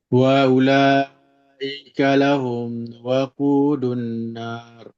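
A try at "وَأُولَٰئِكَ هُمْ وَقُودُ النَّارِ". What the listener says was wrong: kan lagi tak ada tak ada lahum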